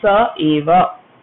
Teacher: That visarga goes off and it becomes sa eva. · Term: lopaha